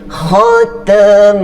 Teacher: huruf mim baris atas, maka kalimah Allah kena baca dengan tebal